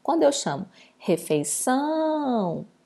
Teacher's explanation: temos aqui a última sílaba sendo a tônica, por isso ela é uma palavra oxítona